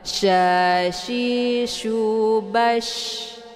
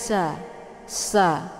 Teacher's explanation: Jadi ditekan dia dan anginnya berhambur. Sya, keluar anginnya dari sela-sela gigi.